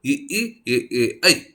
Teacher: ನಾಲಿಗೆ ಮಧ್ಯಭಾಗ ತಾಲವ್ಯದ ಕಡೆ ಒತ್ತಿ ಉಚ್ಚರಿಸುವಂತಹ ಅಕ್ಷರಗಳು